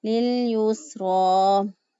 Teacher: اینڈ سے یا silent ہے، یہ پڑھنے میں نہیں آئے گی